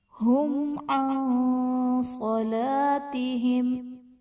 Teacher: عن میں نون ساکن کے بعد حرف اخفا میں سے صاد آ رہا ہے تو یہاں پر ہم اخفا کا غنہ کریں گے۔ صلاتہم میں الف سے پہلے زبر ہے، الف مدہ کا قاعدہ ہے، اور صاد حرف مستعلیہ ہے، اسے ہم پر پڑھیں گے۔ · میم ساکن کے بعد حرف با اور میم کے علاوہ عین آ رہا ہے تو یہاں پر اظہار شفوی کا قاعدہ ہوگا، یہاں پر ہم میم ساکن میں غنہ نہیں کریں گے